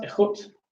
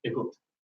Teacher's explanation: So in Irish, you have the radical form in her cat, ekut, lenition in his cat, echut, and eclipsis in their cat, egut, where the k gets either fricated for lenition or voiced for eclipsis